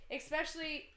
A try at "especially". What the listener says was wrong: Yo, she keeps saying especially wrong, right? You're saying X specially. Yeah, you're not saying what you thought you were.